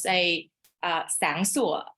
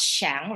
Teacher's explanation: we pronounce sang sủa, not shang, right? With the S.